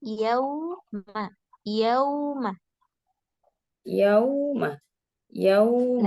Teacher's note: Wawunya jangan pakai suara hidung nih